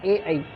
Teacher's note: इनको कंठ और तालु, गले से और तालु से बोला जाता है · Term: कंठ तालव्य